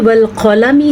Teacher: तो आगे जो वल क़लमी है इसमें क़ाफ को पुर पढ़ना है